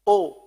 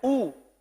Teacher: जब मुकम्मल होंठ गोल ना हुए तो ये ओ बन गया